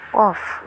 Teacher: Yang selanjutnya adalah konsonan uvular. Belakang lidah bekerja sama dengan anak lidah untuk menghambat udara yang datang dari paru-paru. Yang termasuk dalam golongan ini adalah qaf.